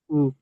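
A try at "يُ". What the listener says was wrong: উ নয়, ইয়া পেশ ইউ, ইয়া পেশ ইউ।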